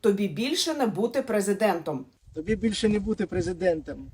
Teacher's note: he pronounces the last word as prezidentam, although the spelling is prezidentom